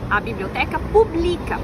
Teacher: passa a ser uma paroxítona terminada em A, penúltima sílaba tônica